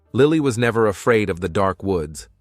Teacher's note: notice the word never we put a little emphasis on that word